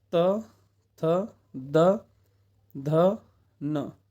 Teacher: जहाँ जीव स्पर्श दांतों से कर रही हो वो दंत से बोले जाते हैं। तो दंत से आपका आता है त वर्ग पूरा।